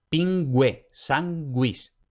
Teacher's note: podemos tener la secuencia G-U más otra vocal. En esa secuencia, al contrario que en español, se pronuncia la U.